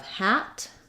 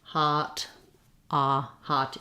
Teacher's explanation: hat is more forward hot ah hot is more back · That's because your tongue is down and out of the way. So if we have hat is more forward, hot, hot is more back.